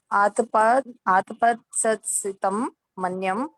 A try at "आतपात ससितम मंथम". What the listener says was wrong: मन्यम नहीं है, मंथम है।